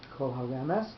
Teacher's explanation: So kol haremes, the re, the resh is the one that's going to get the accent